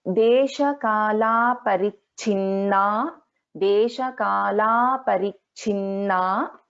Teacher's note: So we have Alpaprana cha as well as Mahaprana cha in this case. So Deshakala, so there is a Dirgha here, please take note